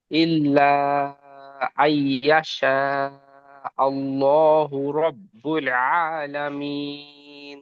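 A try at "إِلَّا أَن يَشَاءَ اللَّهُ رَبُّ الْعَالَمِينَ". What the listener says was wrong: মাশাআল্লাহ, সুন্দর।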